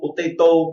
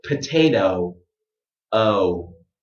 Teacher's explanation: Before I make the round lips, I have a little oh, and then I round my lips.